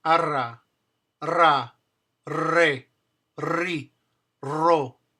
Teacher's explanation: the double r which is the same place where you put your tongue for ar except now you're going to just blow a force of air over it so that it vibrates arr re r. If you have a problem saying it, relax your tongue and just blow air over it.